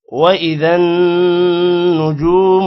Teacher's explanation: جیم کے بعد واو ہے، لمبا کریں گے تھوڑا سا